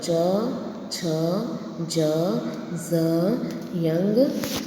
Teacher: તાલુને કહેવામાં આવે છે તાલવ્ય. તો જીભ તાળવાને સ્પર્શતા જે વર્ણનો ઉચ્ચાર થાય તે વર્ણને તાલવ્ય કહેવામાં આવે છે